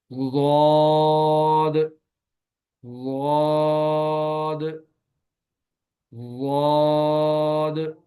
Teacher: ज़ुबान के मोटे किनारे को ऊपर वाली दाढ़ों की जड़ पर आहिस्ता आहिस्ता नरमी से लगाना है। जुबान के मोटे किनारे को, किनारे कहते हैं इसकी साइड को, तो दाढ़ों के साथ लगानी है। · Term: ज़ौद